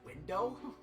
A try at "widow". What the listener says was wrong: You said window, not widow.